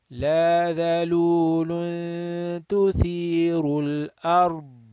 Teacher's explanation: A lot of people, when they stop, let's say here, they will make qalqal on dad. Dad is not a qalqala letter, so you will have to stop dead. · You don't make qalqala, but you can make, you should make istitala, stretching the dad makhraj.